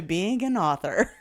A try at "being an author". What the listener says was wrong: Being an author? You put a weird emphasis on "ga," so being an author, like it's like ganache, like I don't know.